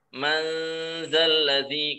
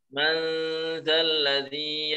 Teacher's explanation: ketika mengangkat ke nunnya itu posisi lidah kita itu mau menuju makhrajnya tempat nun, tapi karena dibaca samar sehingga nggak sampai nempel